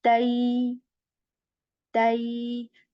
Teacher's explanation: we move from the ta sound to the ya sound and say tai. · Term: ya sakin